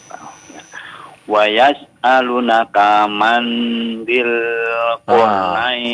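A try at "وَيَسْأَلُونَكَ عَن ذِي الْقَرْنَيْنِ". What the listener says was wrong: Konsentrasi ya, itu huruf ain bukan huruf mim ya. Wa yas'alunaka 'an dzil qarnain.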